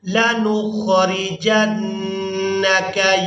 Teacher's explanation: جیم کو نون مشدد کے ساتھ ملائیں گے تو نون مشدد پر غنہ کریں گے